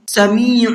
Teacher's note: عین کو حلق سے نکال کر کے پڑھنا ہے